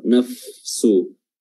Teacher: Rufa itu dia hams juga ya, hams. Jadi ada udara yang keluar.